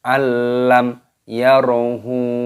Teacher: Jadi jangan dibaca berdengung, jangan dibaca al, tidak boleh, langsung alam. Yarahu, mim sukun bertemu dengan huruf ya, hukumnya dibaca idhar syafawi, jadi dibaca jelas, jangan didengungkan.